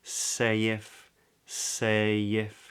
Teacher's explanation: we use a consonant that little y y to smooth that transition between those words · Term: intrusive Y